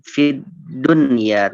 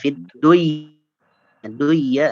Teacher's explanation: Harusnya idgham bil gunnah. Cuma karena nun sukun berada dalam satu kata, ya, maka syarat idghamnya tidak terpenuhi, ya. Maka harus dibaca jelas. Fid dunya, tidak fid duya enggak, tapi fid dunya, ya.